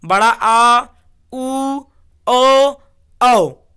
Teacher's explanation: जिन स्वरों के उच्चारण में जीवा का पश्च भाग यानी पीछे का भाग ऊपर उठता है पश्च स्वर कहलाता है